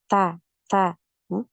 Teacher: huruf Ta ini tidak punya aliran suara jadi enggak ada ya aliran suaranya untuk huruf Ta ini aliran suaranya tertahan bukan ya Sulit ya